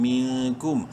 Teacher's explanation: میم نون زیر مین، نون ساکن کے بعد کاف حروف حلقی میں سے نہیں ہے، اخفا ہوگا. کاف میم پیش کم، منکم.